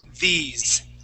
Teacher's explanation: it has that long E sound, and then that S is going to sound like a Z.